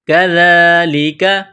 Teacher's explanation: کذالک، کاف کو باریک کرنا ہے، دال کے اوپر کڑا زبر ہے، ایک الف کے لمٹ میں کھینچنا ہے